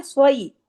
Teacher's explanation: यहाँ पे याई लीन है, इसको सै नहीं पढ़ेंगे